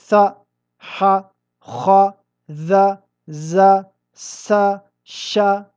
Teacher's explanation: أنت تلاحظ أن الصوت يجري عند النطق بهذه الحروف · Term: الرخاوة